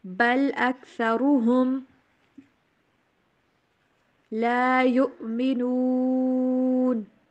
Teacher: را کو اوپر پڑھیں گے، ہا کی آواز کلیئر